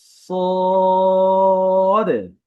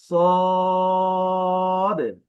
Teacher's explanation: এই হরফটি মোটা হবে বেশি টান হবে একটু সোজাসুজি মানে সদ আবারো বলছি সদ যদি আমরা বিভিন্ন উচ্চারণ দেখি স সুশ্যই খেয়াল রাখতে হবে এই হরফ কিন্তু আকারের মত উচ্চারণ হয় না।